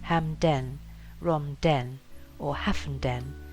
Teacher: Smarden folk will pronounce place names such as Hamden, Romden, or Haffenden with the emphasis on the last syllable, in contrast to, say, Biddenden or Tenterden.